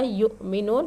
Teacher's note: حمزہ ساکنہ کے پڑھنے میں جھٹکا ہوتا ہے، تھوڑا جھٹکا دے کر پڑھ رہے ہیں ہم. یؤمنون واو ساکن سے پہلے پیش حرف مدہ.